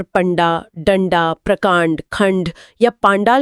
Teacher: बिल्कुल उदाहरण के तौर पर पंडा, डंडा, प्रकांड, खंड या पांडाल शब्दों को देखा जा सकता है। अगर डंडा शब्द को बोलकर देखा जाए तो ड बोलते समय नाक से ध्वनि निकल रही है और तुरंत बाद झटके वाला ड बोलना वाकई मुमकिन नहीं लगता। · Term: मूल ड